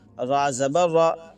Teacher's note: را کے اوپر زبر یا پیش ہو تو را کو پر پڑھتے ہیں، موٹا پڑھتے ہیں